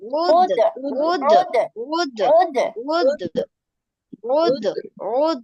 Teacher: সামান্য একটু ধাক্কা এই যে অ ধ্বনি আর এ ধ্বনির দিকে সামান্য চলে যাবে, কিন্তু পুরোটা যদি নিয়ে আসো তাহলে কিন্তু আবার ভুল হবে।